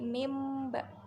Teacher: Kemudian mimba, di sini ada nun sukun bertemu dengan ba, itu iqlab. Cara bacanya nun sukun diubah menjadi mim